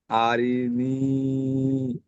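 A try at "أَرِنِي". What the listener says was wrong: হ্যাঁ ঠিক আছে, আপনার পড়া ঠিক আছে, কিন্তু আরিটা আরেকটু স্পিডে বলতে হবে। আরিনি।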